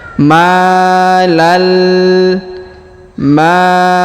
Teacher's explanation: Alif maal kemudian huruf tanwin an bertemu dengan lam bertasdid maka tanwin annya menghilang melebur ke huruf lam yang bertasdid Ya ditahan dan ditekan